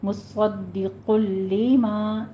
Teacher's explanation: لام موٹا نہیں کرنا ہے، لام کو باریک ہی رکھنا ہے